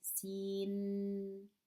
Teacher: if we pronounce the sin, we hear the noon at the end of the sin. Sin, that's noon sound.